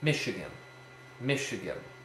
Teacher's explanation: a Dactyl is stressed unstressed unstressed